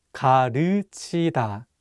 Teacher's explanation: this vowel 으 is much wider than the vowel 우.